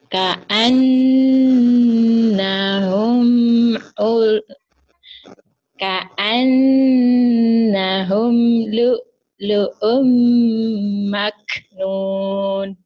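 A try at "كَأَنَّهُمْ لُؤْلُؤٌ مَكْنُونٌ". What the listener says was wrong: Jadi Bu kayak bibirnya tuh kayak masih minggum, kayak ngantuk. Enggak, contohnya ngomongnya kayak gitu Ibu ya. Baca Qurannya jadi kayak ketahan. Padahal Ibu kalau lepas aja ya karena efek kantuk mungkin ya. Ka'annahum lu'lu'um maknun. Kalau Ibu masih gini. Ka'annahum lu'lu'um maknun.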